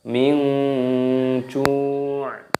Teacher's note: Nun sukun bertemu dengan huruf jim, hukumnya dibaca ikhfa, cara membacanya disamarkan. Jadi dibaca samar, min ju'.